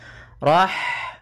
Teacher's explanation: kemudian Rahmani pada lafaz Rahmani ada H sukun maka di sini H mempunyai sifat yaitu sifat Hames maka alirkan nafas kita